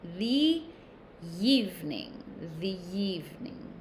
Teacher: we add a little y sound to the next word